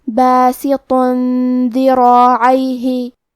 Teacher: کلمت ذراعیہ میں حرف الراء پہ زبر ہے، لہذا ہمیں راء کو اور مد الف کو دونوں کو بھاری آواز میں پڑھنا ہے